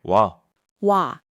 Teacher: So wa is O plus a. Just say them quickly back to back and you get wa.